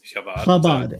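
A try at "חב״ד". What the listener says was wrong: Chabad. Just drop the C. just drop the C. Chabad.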